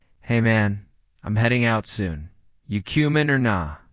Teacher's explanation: Notice the dropped G in heading in cumin and the use of casual phrases.